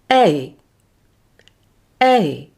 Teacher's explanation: this glide begins in the mid front place in the mouth say e with the mouth slightly open like this e and end with a glide towards by closing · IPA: /eɪ/